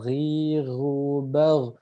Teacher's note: Jadi emang huruf G tapi ada dengkurnya gitu ya, ada ngorok-ngoroknya seperti itu. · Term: huruf Ghin